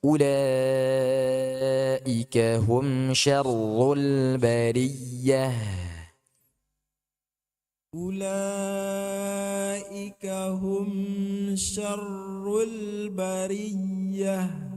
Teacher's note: Dalam kata syarr, ketika masuk ra tasydid itu dia sudah tebal. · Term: Langsung tebal